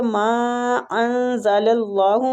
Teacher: جو مد میم کے اوپر مد ہے نا یہ مد جائز منفصل ہو رہی ہے، اس کو کھینچنے کی مقدار بھی تقریباً 4 حرکات ہے